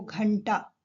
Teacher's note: घंटा ट के पहले ण का बिना स्वर के ण का प्रयोग हुआ है और यही ण अपने से पहले वाले वर्ण घ के ऊपर अनुस्वार के रूप में प्रयोग हो गया। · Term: ट वर्ग के पंचम वर्ण